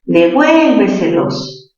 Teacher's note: ¿Mayor fuerza dónde? En vuel. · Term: sobre esdrújula